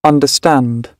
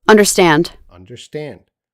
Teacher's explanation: Understand, there's no R, but the American version, there is an R.